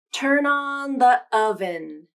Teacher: i used a quick glottal stop between the and oven